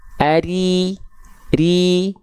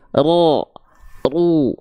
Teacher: Kalau ro berharokat baris bawah atau kasroh, baru ro dibaca tipis, pangkal lidahnya nggak naik.